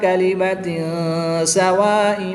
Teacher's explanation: 2 زیر کی تنوین کے بعد سین حرف اخفا میں سے ہے تو یہاں پر اخفا ہوگا، یعنی غنہ زمانی کر کے پڑھیں گے۔